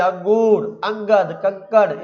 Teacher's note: स्वर के बाद आने वाला व्यंजन है जिसकी ध्वनि नाक से निकलती है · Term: अनुस्वार